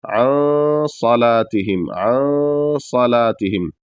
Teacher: نون کو پورا نہیں پڑھیں گے، آدھا پڑھ کر کے ناک میں آواز لے جائیں گے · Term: غنہ